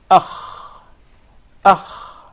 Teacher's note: So the articulation point is the closest part of the throat.